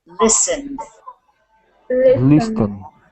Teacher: the t is also kind of Silent you don't really pronounce that t